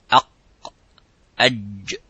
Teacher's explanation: the middle part touches the roof of the mouth, and the sound stops as exactly as the qaf. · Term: jim